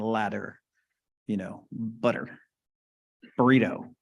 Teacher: You don't pronounce the T. We call that a flap.